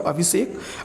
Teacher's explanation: यानी तालव्य स का मूर्धन्य स हो जाता है। जैसे अभिधनसेक बराबर अभिषेक।